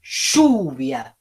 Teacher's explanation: En lluvia, fíjense que la fuerza cae en la U. Lluvia. O sea que la cerrada no tiene acento.